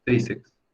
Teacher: Unos músculos que hay en ciertas zonas del cuerpo, tríceps. Esta palabra, la sílaba tónica es tri. Quiere decir que es grave o llana.